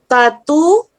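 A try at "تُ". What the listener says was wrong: Terbalik. Terbalik.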